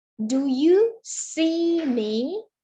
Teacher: Jadi kita berikan penekanan ke kata see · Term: sentence stress